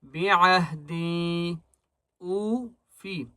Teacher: حمزہ کو ایک الف کی مقدار کھینچ کر پڑھیں گے